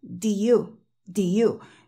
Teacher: si yo omito la de del todo yo diría do y suena realmente extraño